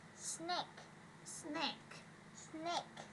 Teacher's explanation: Rồi con rắn thì chúng ta sẽ đọc cái âm này là chúng ta sẽ đọc là âm E ha, âm E là N, E với câu cuối cùng là chúng ta có âm K. Âm K là chúng ta sẽ đẩy hơi ra. Đầu tiên chúng ta sẽ có chữ X ở đây ha, chúng ta sẽ xì hơi ra.